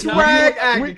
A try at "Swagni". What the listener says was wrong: No. It is 2 syllables, okay? Swagni.